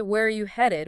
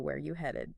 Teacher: we completely drop the word are · We don't say where are you headed, we just blur it all together into where you headed.